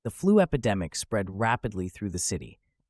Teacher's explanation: Notice how we emphasize 'DEM' in the middle. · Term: stressed syllable